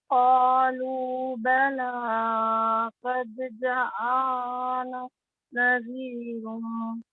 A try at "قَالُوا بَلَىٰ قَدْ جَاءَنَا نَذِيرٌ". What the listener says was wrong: جا نہیں کہنا آپ نے جا کو بس لمبا کرنا ہے جا ہے نا اشرا قالوا بلى قد جاءنا نذير